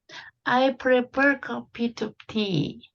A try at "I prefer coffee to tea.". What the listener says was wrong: to에 되게 악센트 안 써도 됩니다. 맞지? I prefer coffee to tea. to를 살짝 발음하셔야 됩니다. I prefer coffee to tea. I prefer coffee to tea. to가 약간 힘 빠져도 됩니다. 약간 힘 빠지게 그죠?